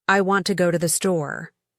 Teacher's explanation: The important words want, go, store are stressed. The small words to, the are weak. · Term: stress-timed